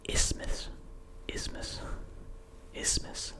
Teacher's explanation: You're not pronouncing the TH